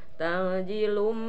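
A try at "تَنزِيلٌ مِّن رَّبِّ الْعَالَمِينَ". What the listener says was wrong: tahan dulu. Para dalaminya ikhfatnya. Tangzilum tak lami kena heta gisok. Ditahan sok.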